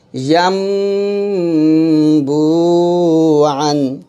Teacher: তো কোরআন মাজিদের মধ্যে যেখানে আপনার নুন সাকিনের উপরে বা তানভিনের এর উপরে একটা এরকম মিনি একটা মিম থাকবে, তখনই বুঝবেন সেটা হলো ইকলাব গুন্না। আর সেখানে নুন সাকিনটাকে পরিবর্তন করবেন মিম সাকিনে, মিম সাকিনে পরিবর্তন করে গুন্নার সাথে পড়বেন। তাহলে এখানে হবে ইয়াম বু আন।